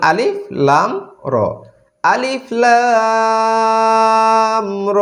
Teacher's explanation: আমরা লামে চার আলিফ টান দিলাম। কারণ হচ্ছে লামের উপরে মোটা চিহ্ন আছে।